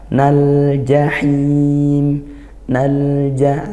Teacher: lamnya dibaca jelas disukunkan gitu ya dialirkan suaranya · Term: zhar Qomariah